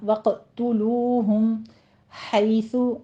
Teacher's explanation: وقتلو میں آپ نے قوف کو مفخم پڑھتے ہوئے قلقلہ کرنا ہے اور تاکہ پر ضمہ ہے، ہونٹ گول رکھنے ہیں، وقتلو نہیں کہنا، وقتلوہم حیث، ہا کو وسط حلق سے ادا کرتے ہوئے یا لین ادا کریں گے